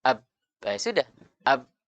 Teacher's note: itu sudah benar makhrajnya ketika kedua bibir kita dirapatkan